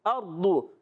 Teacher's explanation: अर्दु हमज़ा को रा से मिलाएंगे, रा से पहले ज़बर आ गया, रा हो जाएगा पुर, रा हो जाएगा पुर। दौद पर पेश आने की वजह दौद भी पुर तो रहेगा मगर होठों की गोलाई से अदा होगा